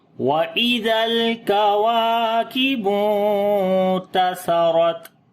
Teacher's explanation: لام کے اندر، واو کو لمبا کریں گے، الف مدہ ہے، نون کے اوپر اخفا کریں گے، باریک اخفا ہوگا، سا کو نرم پڑھیں گے، را کو موٹا پڑھیں گے